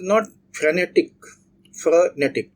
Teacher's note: So the stress is on the second syllable.